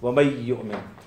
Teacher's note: ادغام ناقص ہے، مکمل ادغام نہیں ہے کیونکہ نون کی آواز باقی ہے